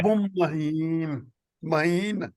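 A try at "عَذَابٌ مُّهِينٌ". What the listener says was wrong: नहीं, मीम के ऊपर पेश पढ़ेंगे तो बनेगा अजाबुम मुहीन। मुहीन।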